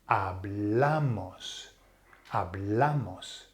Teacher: Because if you think about the nosotros, hablamos, it ends with the S, so therefore it's nose rule, but the emphasis has to fall on the second last vowel, which is the second A now. So it's shifted.